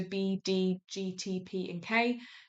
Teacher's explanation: Plosives um air flow is blocked for a brief time, so b d g t p and k.